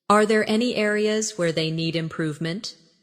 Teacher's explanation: Notice how areas where they flows without breaking.